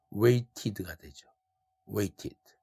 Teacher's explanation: t가 겹치니까. 그래서 이때는 ed에서 모음 e를 살려서 발음합니다